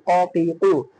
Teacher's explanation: জিব্বার গোড়া তার বরাবর উপরে তালুর সঙ্গে লাগাইয়া দুই নোক্তাওয়ালা কফ, 4 নম্বর মাখরাজ।